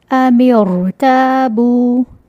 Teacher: اب فارمولا دیکھیں، را ساکن ہے، را ساکن سے پہلے حمزۃ الوصل ہے کسرہ سے، تو اس کسرہ عارضہ کی وجہ سے اس را کو موٹا پڑھیں گے